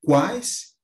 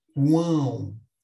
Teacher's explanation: Veja que é um som mais fanhoso, mas com o apoio aqui das narinas. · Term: tritongo nasal